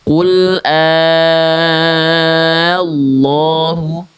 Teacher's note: Tapi perhatikan ketika saya melafalkan lamnya. Qul Allahu ada naik nada. Kenapa? Karena neken lamnya.